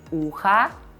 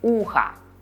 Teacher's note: By the way, notice when we say ухо, we hear a at the end because o is not stressed. But you have to pay attention to not what we hear, but to how we spell it.